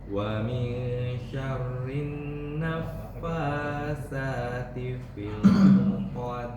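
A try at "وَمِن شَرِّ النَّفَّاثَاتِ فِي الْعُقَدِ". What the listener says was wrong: Wa min syarrin naffatsata bukan sa. Naffatsati fil 'uqad.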